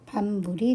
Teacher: 비읍이 미음의 영향을 받아서 미음이 되었고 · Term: 완전 동화